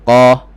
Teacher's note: Isti'la, pangkal lidah naik, tebal lah. Bila sebut isti'la, fahamnya tebal, tinggi.